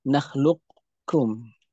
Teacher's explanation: maka huruf qaf-nya hilang secara bacaan tetapi kafnya ditebalkan · kita seolah-olah akan menyebutkan qof tapi yang keluar dari mulut adalah k · huruf qafnya hilang secara bacaan, tetapi kafnya ditebalkan. Ketika akan menyebutkan kaf ditebalkan, ini menyisakan sifat, maka dinamakan dengan idgham naqis.